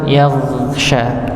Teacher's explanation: huruf gha yang sukun maka jangan sampai dibaca memantul atau tertahan. Yaghsha ini tertahan, ya, atau dia dipantulkan yaghsha tapi dialirkan, ditebalkan karena dia termasuk huruf yang tebal dan dialirkan, yaghsha.